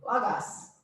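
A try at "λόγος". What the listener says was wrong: So pronounce like Logos.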